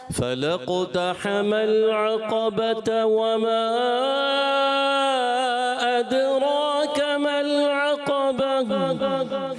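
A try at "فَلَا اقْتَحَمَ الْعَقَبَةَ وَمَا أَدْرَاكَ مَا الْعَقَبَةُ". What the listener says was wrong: اچھا پڑھا مگر آپ نے مد چھوڑ دی.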